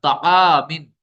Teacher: تعامن میں الف سے پہلے عین ہے یہ باریک حرف ہے تو الف بھی باریک ہو جائے گا